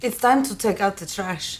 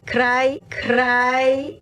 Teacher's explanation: italians however do what is called either an alveolar tap or an alveolar trill their tongue actually touches the top of their mouth somewhere behind their teeth